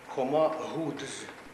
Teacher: замість ґ кажуть г, по-друге, замість дз кажуть д і з